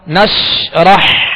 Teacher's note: نش آواز شین کو ادا کرتے ہوئے منہ میں پھیل جائے گی مگر اس میں بھی قلقلہ نہ ہو۔ نشرح ہا کو وسط حلق سے واضح ادا کرنا ہے